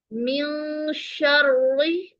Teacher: یہاں پر اخفا کرتے ہوئے ہم آواز کو ناک میں چھپائیں گے. نون کی آواز کو ناک میں چھپائیں گے، یعنی نون کی آواز سنائی نہیں دے گی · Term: اخفائے حقیقی